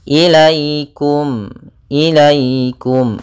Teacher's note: sukun yang di fathah ini bacaan Lin maka dalam pelafalannya harus lembut tidak boleh ilaikum jangan sampai juga dibaca dengan bacaan e harus